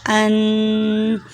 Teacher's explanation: حمزہ سینے سے ادا ہوتا ہے